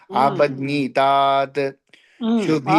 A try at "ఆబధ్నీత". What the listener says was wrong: ఆబధ్నీత అంటేనండి తాతు లేదు